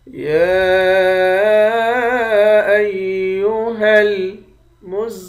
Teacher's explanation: کھڑے زبر کے اوپر مد بھی ہے۔ اس مد کو 3 الف کے مقدار کھینچ کر پڑھیں گے۔ زا کو سختی کے ساتھ جمع کر پڑھیں گے، میم مشدد پر غنہ کریں گے، آخر میں لام ساکن ہے۔